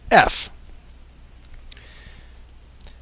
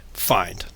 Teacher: if you try to you make a very tight closure so if you place your upper teeth on your lower lip and then breathe past it you end up of course with the sound F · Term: labial dental